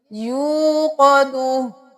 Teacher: واو مدہ ہے تو ایک الف کے برابر کھینچیں گے